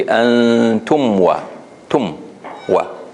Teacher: So I have to make sure my lips have the time to close before the waw. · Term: mim sakina